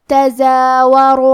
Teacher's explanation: کلمت تزاورو میں زے پہ کھڑا زبر ہے تو یہاں مد الف ہے، ہمیں مد الف کو ظاہر کرنا ہے۔ آخری میں را پہ پیش ہے تو ہم حرف الرا کو موٹی آواز میں پڑھیں